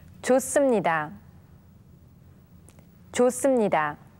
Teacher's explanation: Remember that when the hyut 받침 is followed by a consonant, the consonant sound becomes a strong one. Now, in the case of the consonant 시옷, it turns into a double consonant sound